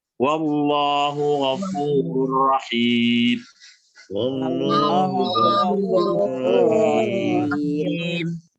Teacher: Karena yang ditafkhim itu adalah lamnya, bukan fathahnya ya. Jadi bukan A jadi O begitu, nggak ada gunanya.